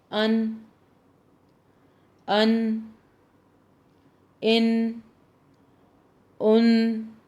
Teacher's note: ہماری زبان کی نوک کا اوپری حصہ، اوپر کا حصہ اوپر کے دانتوں کی جڑ کے اوپری حصے کو لگتا ہے، جڑ کے اوپری حصے کو لگتا ہے تو نون ادا ہوتا ہے۔